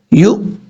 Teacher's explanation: حمزہ ساکن جو ہے وہ جھٹکے کے ساتھ پڑھا جاتا ہے